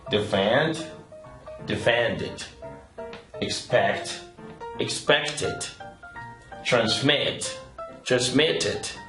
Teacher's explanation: esta terminación en ed se pronuncia it cuando el verbo termina en D o en T.